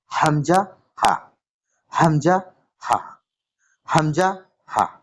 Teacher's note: এটা হচ্ছে হালাকের বা কণ্ঠনালীর শুরু হতে উচ্চারিত, অর্থাৎ আমাদের বুক থেকে কিছুটা উপরে যেখানে গলা শুরু হয়েছে সেখান থেকে। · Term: 1 নম্বর মাখরাজ